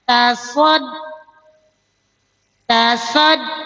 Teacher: Hurufnya jahar, syiddah, istifal, infita tipis. Jadi tidak keluar napas, tidak mengalir suara. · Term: nabar